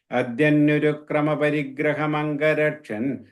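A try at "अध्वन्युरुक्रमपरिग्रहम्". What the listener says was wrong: the third line, first word, it's Advanyuruk. I'm hearing Adyan. It's Advanyurukrama.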